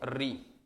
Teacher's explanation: री का उच्चारण आप करिएगा तो देखिएगा आपको जिह्वा वाइब्रेट होगी र की तरह